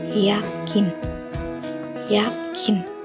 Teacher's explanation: Cara pembentukannya itu lidah mendekati langit-langit keras. Y, Y, Y.